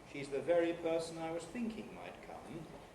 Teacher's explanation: the nucleus is on the first syllable of thinking but more material is required in order to justify the use of the compound pattern with its additional rise